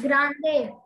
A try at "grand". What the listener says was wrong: Grand, not grande, grand. So it is pronounced as grand and grand.